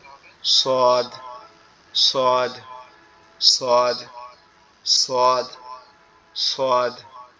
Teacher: আমাদের জিহ্বার আগা সামনের নিচের দুই দাঁতের আগার সঙ্গে লাগবে, লেগে উচ্চারিত হবে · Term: সোয়াদ